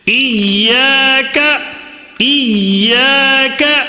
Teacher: الف مدہ کی وجہ سے کھینچ رہے ہیں